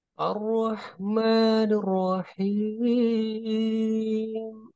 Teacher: datar plus Ayunan ya di ujungnya